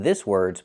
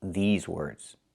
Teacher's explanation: I cannot use the short I like this is. I need the long E like green beans.